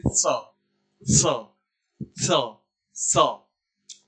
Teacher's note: इसका दंत स इसलिए दांत के पास जीवा ला के बोलते हैं